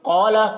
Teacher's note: क़ाफ को पुर पढ़ेंगे, क़ाफ हुर्फ़ मुस्तालिया में से है